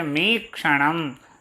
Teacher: मी गुरु है, क्ष लघु है और णम भी गुरु है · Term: रगण